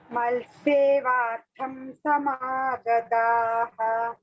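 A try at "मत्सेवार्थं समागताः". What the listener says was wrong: Mal you should not say. Mat. Mat. Mat sevartham samagataha.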